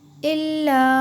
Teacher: الف صرف یہاں پہ لکھنے میں ہے، یعنی سائلنٹ ہے۔ الا، اور یہ جو مد ہے یہ الف کے اوپر ہے، اسے آپ یعنی کھینچ کے پڑھیے، زیادہ کھینچنا ہے۔ الا، جیسے واو کو کھینچ کے پڑھے ہم نے، اسی طرح سے۔